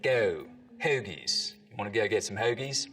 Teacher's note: the goat diphthong starts to move forwards in the mouth